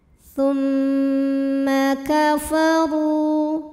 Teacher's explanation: Huruf ra dibunyikan secara tafkhim sebab huruf ra berbaris dhammah. Maka cara bacanya ditebalkan. Pangkal lidah kita naikkan.